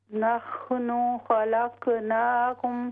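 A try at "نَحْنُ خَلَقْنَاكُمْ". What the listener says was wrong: ہاں جی قاف کو ظاہر کریں، نحن خلق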